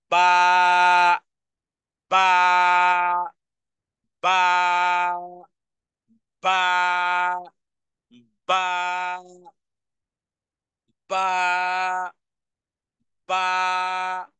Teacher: দুই ঠোঁটকে বন্ধ রেখে লম্বা করে টেনে আওয়াজকে সহজ করে উচ্চারণে ধাক্কা দিয়ে বলুন